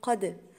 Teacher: قد، حرف القاف عندي هنا مفخم وهو في أعلى درجات التفخيم لأن هو مفتوح، يبقى أي حرف من حروف التفخيم ولاقيه مفتوح يبقى هو من أعلى درجات التفخيم. أقول ق قد، والدال ساكنة فهقلقلها